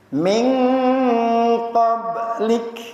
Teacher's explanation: Ba dalam keadaan sukun, qalqalah. Qalqalah apa? Berpantul.